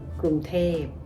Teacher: กรุง is pronounced with a flat tone. เทพ is pronounced with a falling tone.